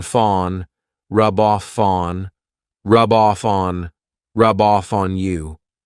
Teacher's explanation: So I'm saying those 3 words as one rub off fawn. So here I'm taking the F from off and I'm adding it to on